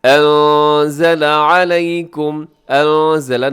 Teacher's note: انزل نون ساکن کے بعد زا، یہاں اخفا کیجیے گا